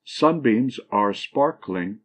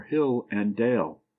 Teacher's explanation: a foot that has the first syllable accent and the last two unaccented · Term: Dactyl